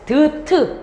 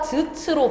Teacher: 파열음이었던 애들이 즈츠 터뜨리기는 하는데 갈면서 마찰을 일으키며 터뜨리니 마찰음으로 방법이 바뀌었고요.